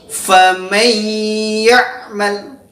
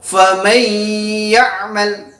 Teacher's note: Yang pertama adalah apabila ada nun sukun ini ketemu dengan huruf ya, yaitu faman ya'mal. Ya, harus ada mendengung, jadi tahan. · Jadi apabila ada huruf nun sukun atau tanwin ketemu dengan huruf yang 4 tadi, maka disebut dengan hukum bacaan idgham bi gunnah. Jadi cara membacanya yaitu dengan dimasukkan dengan mendengung.